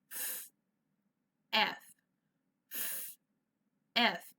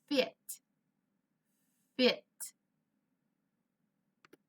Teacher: come together they kind of push out and it comes through a puff of air comes through my teeth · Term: f sound